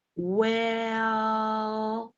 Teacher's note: you should notice how the vowel is drawn out